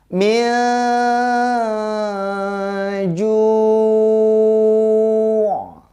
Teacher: Harus berasa sampai hidung kita karena huruf ain itu memang pembacaannya seperti itu. Ketika dia hidup maupun dia mati, dia harus seperti itu.